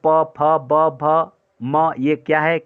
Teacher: फिर, ओष्ठ्य ध्वनियों के अंतर्गत, आप जानते हैं कि 'पा, फा, बा, भा, मा' ओष्ठ्य व्यंजन हैं। दोनों होंठ एक दूसरे को छूते हैं। · ये क्या है कि ओष्ठ वर्ण है, ये दोनों ओष्ठ को स्पर्श करते हैं